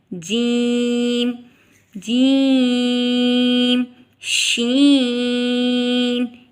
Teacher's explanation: اس کا مخرج ہے زبان کا درمیان جب اوپر کے تالو سے ملے تو یہ حروف ادا ہوگا، جیسے کہ ہم نے پیچھے پڑھا ہے جیم، جیم، شین، ان دونوں کا ایک ہی مخرج ہے۔